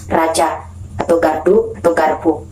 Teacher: Lanjut, konsonan alveolar alveolar R itu dibentuk dengan menempelkan ujung lidah pada gusi. Nah, kalau konsonan alveolar R ini pita suara kita itu dalam keadaan bergetar